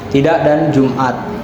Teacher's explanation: bunyi hentian singkat yang terjadi di tenggorokan karena pitas suara menutup rapat lalu dilepaskan cepat. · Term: glotal stop